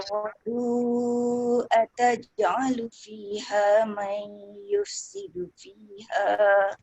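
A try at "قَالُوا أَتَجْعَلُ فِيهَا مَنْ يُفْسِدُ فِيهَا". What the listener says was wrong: Satu, jim kena jelas qalqalahnya. Yang kedua, dekat ayat yufsidu. Dia fa dengan sin tu. Dia punya makhraj tu kena letak tepat. Yufsidu fiha yufsi. Dia kena keluarkan angin fa dulu.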